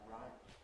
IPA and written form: raɪp (ripe)